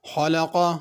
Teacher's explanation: خلق خا کو پر کرنا ہے،